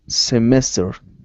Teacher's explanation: Instead of semester, it's semester. The stress is in the middle.